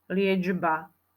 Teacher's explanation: No ja tam počujem dž, ale nepíšeme tam dž, pozor na to, píšeme tu č. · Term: spodobovanie